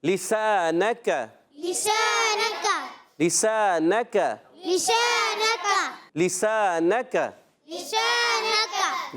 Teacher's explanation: کاف باریک ہو، موٹا نہیں ہونا چاہیے۔